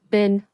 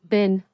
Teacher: in fast, everyday speech, we usually say, been, with a short E. So we would say, it's been a proper holiday.